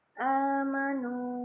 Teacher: amanu panjang ya, a 2 ketukan, nu 2 ketukan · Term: Mad